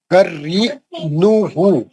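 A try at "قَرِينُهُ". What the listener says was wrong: हाँ, हर जगह आप पेश को जबर पढ़ रहे हैं। खरीन, मैं बोला पेश पढ़ चुका, मैं होठ गोल रख के पढ़ो।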